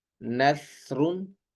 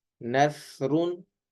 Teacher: سا کو بغیر سیٹی کے پڑھا جاتا ہے اور سین کو سیٹی کے ساتھ پڑھا جاتا ہے.